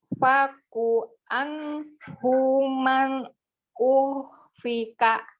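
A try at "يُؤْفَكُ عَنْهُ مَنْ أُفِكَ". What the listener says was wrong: bacanya jangan dihentak-hentak. Jangan diputus-putus. Yufaku anhu man. Disambung-sambung suaranya.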